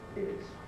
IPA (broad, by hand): ɪz